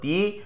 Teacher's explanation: তিথি শব্দটি যদি উচ্চারণ করি তাহলে এক্ষেত্রে দুবার ঝোঁক পড়বে, এক হলো তি আর দ্বিতীয় হলো থি।